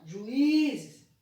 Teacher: a sílaba I é mais forte e tem um hiato antes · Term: sílaba tônica